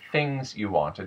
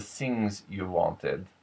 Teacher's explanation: The TH at the beginning of a word tends to become closer to an S. Instead of the things you wanted, it becomes the things you wanted.